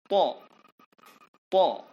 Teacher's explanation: Ujung lidah diletakkan di belakang gigi bagian atas. To. Dan disebut dengan tidak berdesis.